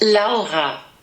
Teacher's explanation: Native English speakers have the hardest time pronouncing this name correctly in German because it has that little guttural sound in the middle